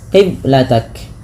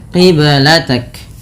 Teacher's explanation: Qiblatak ada bacaan qalqalah pada lafal huruf ba yang disukunkan. Ba sukun merupakan salah satu bacaan qalqalah yang dimana harus memantul. Kesalahan yang terjadi dalam membaca qalqalah yaitu tidak memantulkannya, qiblatak.